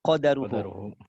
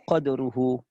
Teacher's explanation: Imam Syu'bah membaca qadaruhu dengan disukunkan dal disertai dengan qalqalah